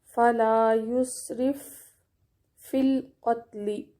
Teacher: یسرف کا فا اور فی کا فا دونوں مل جائیں گے، پہلا فا ساکن ہے اور دوسرا متحرک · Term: ادغام مثلین